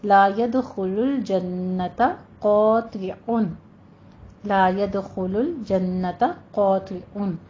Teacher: قاطع میں قوف بھی پر ہے، طا بھی پر ہے، عین کو وسط حلق سے ادا کرنا ہے